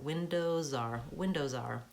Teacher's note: So I'm saying the Z sound, it's almost like it's on that R.